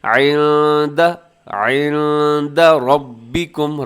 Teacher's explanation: ربکم میں را کے اوپر زبر ہے تو را موٹی پڑی جائے گی · نون ساکن کے بعد دال ہے تو یہاں اخفا کیجیے گا اس لفظ کے اندر